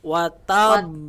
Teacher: Itu ba yang pertama kita tekan. Kemudian kita memunculkan lagi dengan ba yang kedua. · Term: qalqalah